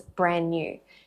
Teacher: you're linking N to N, same sound consonant linking